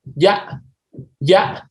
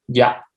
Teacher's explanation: La primera tiene una tonalidad más alta y la segunda tiene una tonalidad más baja. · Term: altura tonal